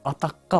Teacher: Жумшак г тыбышы каткалаң к тыбышына башыйды дагы, ага окшошуп, жыйынтыгында атакка болуп өзгөрүлдү. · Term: толук ассимиляция